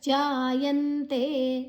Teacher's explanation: ಜಾಯಂತೆ, ಜಾ ದೀರ್ಘ. ಯಾದ ನಂತರ ಅನುಸ್ವರದ ಉಚ್ಚಾರಣೆ ನ, ಮುಂದಿನ ಅಕ್ಷರ ತೇ ಇದೆ.